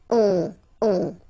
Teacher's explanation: you don't pronounce the final s, you get the on sound. Okay? Nasal in your nose.